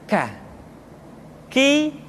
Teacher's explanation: diucapkan dengan mengangkat pangkal lidah kita ke posisi di depan huruf qaf